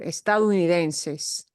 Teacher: you will hear native speakers dropping the O off of that estado in that word, estadounidenses.